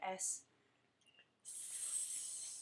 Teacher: It doesn't vibrate. So S is unvoiced because your vocal cords don't vibrate